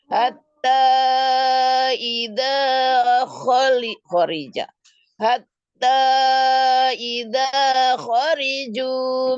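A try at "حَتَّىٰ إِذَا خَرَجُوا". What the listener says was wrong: khara bukan khori kan patah.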